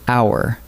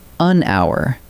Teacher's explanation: Take the word hour. We write it with an H, but the H is silent, so hour opens with a vowel sound. That is why we say an hour and never a hour.